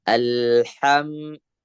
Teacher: huruf ha-nya eh usahakan lebih dari kerongkongan ya bagian tengah